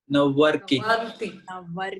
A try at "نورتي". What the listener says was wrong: نورتي with a T.